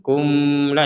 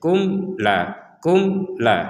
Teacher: sama sekali tidak ada dengung tidak ada dengung kumla itu ada dengungnya berarti itu salah Jadi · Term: dibaca dengan jelas